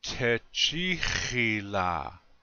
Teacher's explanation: Again, the accent is still on the second syllable.